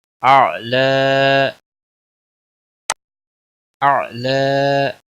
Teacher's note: اعلی، اعلی، یا وقف کی صورت میں یا خالی ہو اور اس سے پہلے جب زبر ہوتی ہے تو اس کو کھڑی زبر لگا کر پڑھیں گے، ایک الف کے برابر کھینچ کر وقف کریں